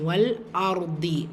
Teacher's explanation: ரா சுக்குன் பெற்று அதற்கு முந்தைய எழுத்தில் ஃபத்ஹா வரும்போது அந்த சுக்குன் பெற்ற ராவை வல்லினமாக உச்சரிக்கணும்.